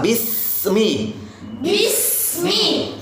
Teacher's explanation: ujung lidahnya di gigi bawah nah nah Bismi desis bis Bismi kasih desisan yang kuat